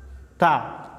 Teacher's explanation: Punggung ujung lidah dan pangkal dua gigi seri muka yang atas. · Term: huruf ta